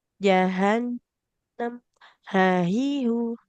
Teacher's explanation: Huruf H-nya di pangkal tenggorokan